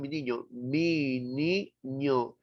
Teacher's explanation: El aire sale expulsado, no solamente por la boca al manifestarlo, sino también por la cavidad nasal. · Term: Las nasales